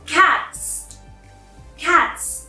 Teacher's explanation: the plural form doesn't carry a vibration as well